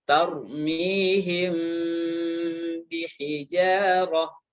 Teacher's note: Dibaca samar disertai dengan gunnah indal ba ketika dia bertemu dengan huruf ba. Maka dia disebut dengan wa yusamma ikhfa'an syafawiyan. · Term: ikhfa syafawi